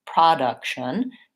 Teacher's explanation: look at the word production then I have second syllable stress the first syllable is shorter and the vowel changes · my first vowel becomes that schwa sound